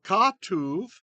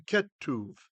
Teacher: So katuv, when the accent moved, became ketuv.